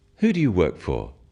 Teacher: When you ask people questions about themselves in English, use a falling tone.